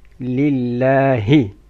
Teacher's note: لام of Allah is empty mouth. لله. And ها should be deep.